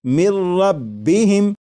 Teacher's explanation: نون ساکن کی آواز نہیں آئے گی، بلکہ میم کے بعد را کی آواز آئے گی، اور یہاں پر غنہ نہیں کریں گے اور اسے پڑھیں گے مر ربہم۔ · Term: ادغام